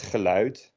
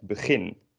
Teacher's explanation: two syllable words that start with ge, be, or ver. Those are like unemphasized.